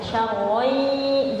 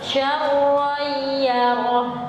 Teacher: Jadi dengungannya panjang ya, syarran, jangan syarran yarah.